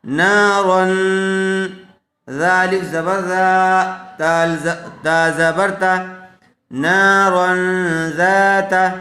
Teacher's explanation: نون الف زبر نا، را دو زبر رن. تو یہاں تنوین کے بعد حروف اخفا میں سے زال آئی ہوئی ہے، اس لیے غنّے کے ساتھ اخفا کر کے پڑھیں گے